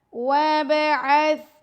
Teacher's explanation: با پر قلقلہ کریں گے، سا کو نرمی سے پڑھیں گے